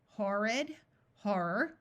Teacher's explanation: words o r r has a long o sound horid horror note again that the o r takes on a muffled R sound